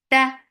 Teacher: Ta for fatha open jaws, it is very shidda sound. No flow of sound should be there.